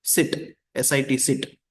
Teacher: air passes through a narrow opening creating the friction